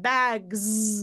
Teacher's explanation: then I need to voice that bags in the plural